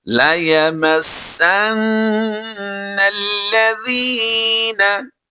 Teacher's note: नून लाम ज़बर नल जो है ये लाम भी बारीक पढ़ा जाएगा, अगरचे ये मुशद्दद है लेकिन फिर भी हमने इसको बारीक ही पढ़ना है।